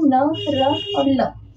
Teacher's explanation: ये आपके जीभ का ऊपरी मसूड़े जो होते हैं उसको स्पर्श करता है। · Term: वर्तस्य व्यंजन